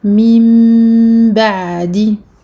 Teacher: Donc on a ici ce qu'on appelle al-iqlab ou al-qalb. Noun sakin suivi d'un ba. On remplace le noun par un mim.